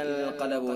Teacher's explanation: قاف چونکہ حروف مستعلیہ میں سے بھی ہے، اس لیے قاف کو پر یعنی موٹا بھی پڑھیں گے